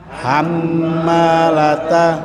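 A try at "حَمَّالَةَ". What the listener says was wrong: Agak panjang Bapak Ibu nahannya. Hammalah.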